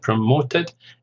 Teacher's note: it's 3 syllables, stress on the second